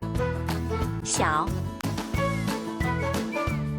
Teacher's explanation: need to use the third tone or dipping tone when pronouncing start at a neutral tone then dip to a lower pitch before ending at a higher pitch